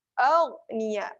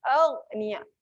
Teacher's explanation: Ghain adalah huruf tebal berada di hujung kerongkong.